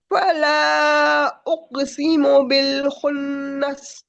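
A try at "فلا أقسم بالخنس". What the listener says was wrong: नून पे गुन्ना पूरा दो फला उक़सिमु बिल खुन्नस।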